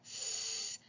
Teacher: My tongue is kind of hitting my bottom teeth, the back of my bottom teeth. But it's almost like I'm trying to spray water out of my mouth.